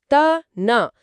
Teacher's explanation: நாக்கோட நுனி மேல்வாய் பல்லோட அடிய தொடும்போது